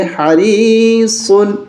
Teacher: گے اور یہاں بھی غنہ نہیں کریں گے، اس لیے کہ تنوین کے بعد عین حرف حلقی ہے، یہاں غنہ نہیں کریں گے